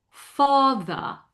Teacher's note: So, some slight rounding of the opening. So instead of fa you're going to slightly close your lips